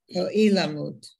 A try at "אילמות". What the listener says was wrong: No, it's not ilamut. It's ilmut with a shva. Now it comes from the word ilem.